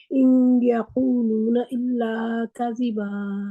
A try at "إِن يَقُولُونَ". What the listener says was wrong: ان یقولون، ان نون کی آواز وہ ان کی نون کے مخرج کے جا کے اوپر آپ نے دباؤ نہیں ڈالنا.